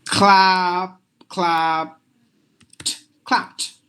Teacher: You just have to replace the ed with the T sound.